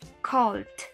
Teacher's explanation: Nuestro verbo call, que es llamar, le agregamos la terminación ed y esta terminación se va a pronunciar como una D